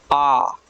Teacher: आ कहने के लिए पूरा मुंह खुल रहा है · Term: विवृत स्वर